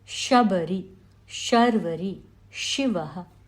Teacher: tongue slightly touches the hard palate, reflecting the air off of it. Therefore, it is a Palatal (तालव्य) sound. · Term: palatal sound